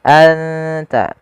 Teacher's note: suara nunnya disamarkan ke huruf ta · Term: ikhfa